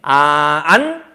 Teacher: 안 하면 아마 혀가 이하고 그러니까 여기 혀가 여기 부분 뒤에 잇몸 뒤에 가서 붙는 걸 느낄 수 있을 거야. 안 하면 혀가 잇몸 뒤에 이렇게 붙을 걸. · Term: 니은